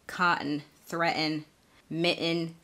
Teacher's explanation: those exceptions when the t comes before a syllabic n so a syllabic n is when the n sound sort of makes a whole syllable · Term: glottal t